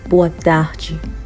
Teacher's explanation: So we are still getting the J sound because when D-E is ending a word, you are going to get the sound J